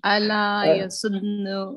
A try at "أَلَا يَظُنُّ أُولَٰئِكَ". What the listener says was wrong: Yasunnu. No, it's dha. Ala yadhunnu ulaika. Yadhunnu. So it's here, the central letter, not the last. The noon is fine. You don't have a problem with the noon.